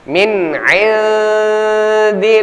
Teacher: nun mati bertemu dengan Ain izhar jelas kita baca